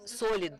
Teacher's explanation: the stress on the first syllable in the word solid is not typical for russian · And I would note here that solid tumor is actually named solidные опухоли, which is not typical. The stress on the first syllable in the word solidny is not typical for Russian, but still we have to be correct about that.